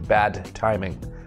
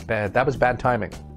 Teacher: bad timing bad timing bad timing that was really bad timing it's too difficult to connect a d and a t and say both together clearly